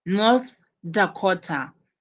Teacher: North Dakota, you place your stress on Dakota.